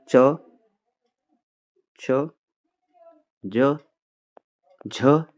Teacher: च वर्ग के जितने भी व्यंजन है वह क्या होते हैं? तलव्य हैं।